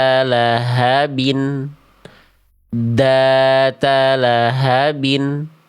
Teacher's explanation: Ini bacaan yang salah karena dalalnya suaranya mampet. Lahabin data lahabin seharusnya dzata lahabin dzata lahabin.